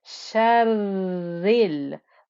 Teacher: The ra with the shadda and the kasra, we had to make sure the ra got its time for the 2 ra's that are there.